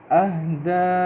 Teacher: اہدا کے اینڈ پہ آپ دیکھیں میں اس کو لمبا کر رہا ہوں کیونکہ مد ہے